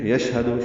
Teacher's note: یشہد شین ساکن پہ ہمس اور تفشی ہے ، ہا پر زبر جلدی، دال پر پیش جلدی اور معروف